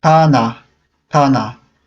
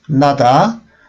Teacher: So in this case, we don't say nata, but we say nada. So when it is the first letter of the word, we read it as T, and when it is in the middle, in that case, we read it as D.